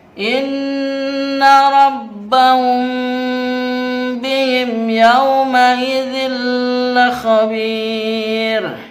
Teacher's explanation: mim bertemu dengan ba itu dibaca dengan samar, ditahan, itu namanya ikhfa syafawi.